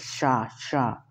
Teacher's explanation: शाह, शाह जो होता है वो तालु से